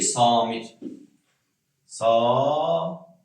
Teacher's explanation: Samit sözü deyəndə nə etmiş oluruq? A-nı uzadırıq.